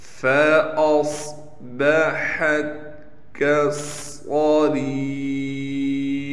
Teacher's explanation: را کو ایک الف کی مقدار کھینچنے کے ساتھ را کو باریک کر کے پڑھیں گے